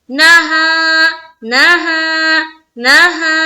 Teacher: وَإِنَّهَا وَإِنَّ نون مشدد کا غنہ نہا نہا نہا، اس نا کو جل پڑھ رہے زبر کو اور ہا میں کھینچ رہے ہیں کیونکہ الف مدہ ہے